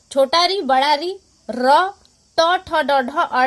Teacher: र, ट, ठ, ड, ढ, अड़ और मूर्धन्य श कहाँ से? आपके मूर्धा से बोले जाते हैं।